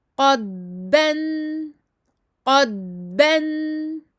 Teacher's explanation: Écoulement du son, on le garde un maximum jusqu'au moment où on passe sur le makharaj du ba. Rien entre deux.